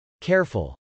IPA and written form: kˈɛrfəl (careful)